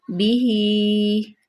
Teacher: ساتھ واو لین آ گیا، واو ساکن ما قبل مفتوح، بیہی، ہا کے نیچے کھڑی زیر ہے، اس کو لمبا کریں گے